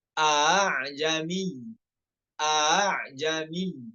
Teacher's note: Hamzah yang pertamanya tahqiq, yang hamzah keduanya tashil.